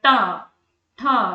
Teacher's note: जीभ पीछे मुड़ गई और मूर्धा को छू रही है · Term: मूर्धन्य व्यंजन